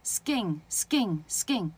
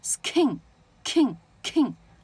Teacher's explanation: s▁跟▁k▁在一起，后面接元音，它马上要从▁k▁变成▁g▁啊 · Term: 不送气